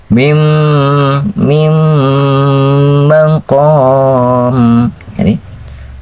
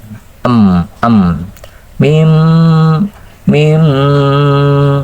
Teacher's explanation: panjangin kira-kira dua harakat larikkan ke hidung karena gunah kan kalau memanjangkan suara